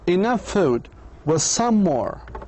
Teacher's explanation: In the phrases enough food and was some more, there is no pause between the words. In fact, the middle consonant sound is shared so perfectly with both the first and the second words that we cannot tell that the consonants occurred twice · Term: Linking the same continuous sounds